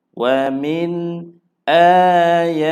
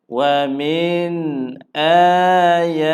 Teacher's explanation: nun mati bertemu dengan hamzah, tiada dengun, hanya jelas saja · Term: izhar